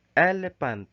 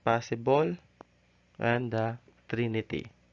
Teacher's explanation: three syllables the first of which is stressed and the next two of which are unstressed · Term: ducktail